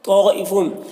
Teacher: طائفون تو حروف مستعلیہ میں سے پر پڑھیں گے اور یہ جو مد ہے مد متصل ہے، اسے تین سے چار الف کے برابر کھینچ کر پڑھتے ہیں